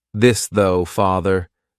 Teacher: tongue in between your teeth and your vocal cords are going to vibrate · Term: voiced th